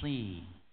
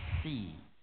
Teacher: Padahal shad itu punya sifat, lalu kita belum masuk ke sini, ya, isti'la, ya, lidah bagian belakang terangkat, si. Kalau sin dia si, lidah itu belakang sampai depan merendah semuanya, si itu sin, ya.